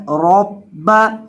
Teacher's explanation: बा मुशद्दद है, इसको सख्ती के साथ पढ़ना है